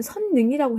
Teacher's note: 선능은 능이 된 것이니까 리을이 니은으로 교체된 것이죠. 리을의 비음화예요.